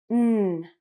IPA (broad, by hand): n